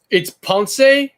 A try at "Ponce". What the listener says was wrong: No. Ponce. Like Ponce de Leon, yes. But Ponce de Leon is just in the right way to say it. Ponce. Just an accent on the E at the end.